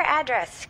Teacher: To pronounce address, have in mind that the size of the syllable indicates where the accent or stress is. In this case, the accent is in the second syllable, corresponding to dress